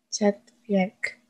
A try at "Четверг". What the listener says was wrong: Enggak pakai Y di situ. Chatverk.